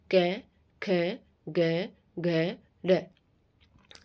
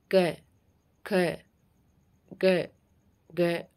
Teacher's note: जब आप क वाली लाइन को बोलते हो जैसे क ख ग घ ड जब आप इनको बोलोगे तो जो आवाज है सीधी कहां से आएगी कंठ से आएगी